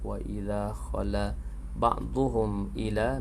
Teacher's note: mimati bertemu dengan hamzah izhar syafawi jelas pada bacaan mimati